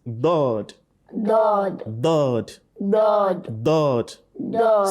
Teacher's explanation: either both edges or one side of the tongue touches the premolar and molars. Okay, so most particularly the left side, you let it touch the premolar and molars.